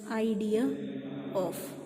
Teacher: This r is inserted, so it is intrusive r.